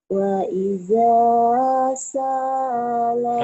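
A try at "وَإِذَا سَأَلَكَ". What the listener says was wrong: Sa'alaka, sa'alaka enggak ada yang panjang. Wa idza sa'alaka ibadi.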